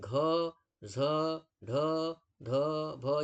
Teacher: यानी घ झ ढ ध भ ये महाप्राण है, ठीक है। तो महाप्राण वर्ण और सघोष है।